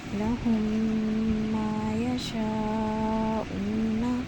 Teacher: میم ساکن کے فوراً بعد میم متحرک آ رہا ہے، یعنی کہ میم زبر کے ساتھ آ رہا ہے تو ہم نے دونوں میم کا ادغام کر دیا اور ادغام شفوی کر دیا۔